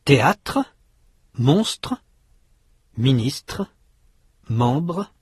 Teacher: En français, les deux consonnes se succèdent plus rapidement. Elles sont plus étroitement liées l'une à l'autre. En anglais, il y a souvent un espace entre les deux consonnes.